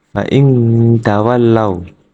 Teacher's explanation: Terdapat nun sukun bertemu salah satu huruf ikhfa hakiki, yaitu ta. Cara membacanya dengan menyamarkan bacaan nun sukun atau tanwin sepanjang 2 harokat